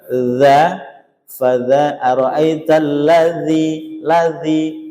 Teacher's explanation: Yang atas itu bagian dia wasat tengah-tengah. Berarti kalau mengucapkan dza dzi permukaan ujung lidah menyentuhnya di tengah gitu ya.